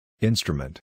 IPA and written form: ˈɪn.strə.mənt (instrument)